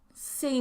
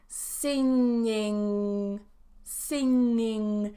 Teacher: no sound comes out of my mouth here it all comes out of my nose